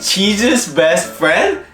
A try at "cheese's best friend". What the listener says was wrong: Sounds like you're saying Jesus.